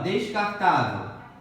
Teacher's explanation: a penúltima sílaba é tônica, paroxítona. Terminada em L.